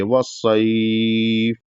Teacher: یہاں پر تقریباً 3 سے 4 الف کے برابر کھینچ کے رکیں گے کیونکہ یہ مد لین ہے